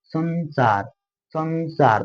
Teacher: नाक से हल्का आवाज जाएगा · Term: अनुस्वार